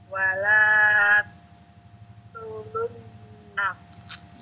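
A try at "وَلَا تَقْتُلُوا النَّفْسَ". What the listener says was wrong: Baik, qafnya ana enggak kedengeran qaf. Coba sekali lagi, Bu.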